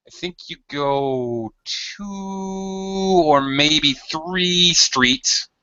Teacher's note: stretching my vowel sound and actually slightly Rising the pitch to let you know that I'm still talking